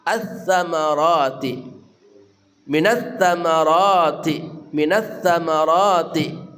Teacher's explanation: sa-nya ujung lidah bersama ujung gigi seri atas